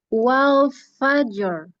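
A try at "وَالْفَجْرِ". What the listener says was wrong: Jangan fajar, bukan fajar. Tapi wal fajr. Tafkhim ra-nya. Lamnya tipis. Wal jangan ikut tebal semua. Jangan seperti ra-nya Inggris wal fajr. Ada takrirnya tetap. Ada getarannya.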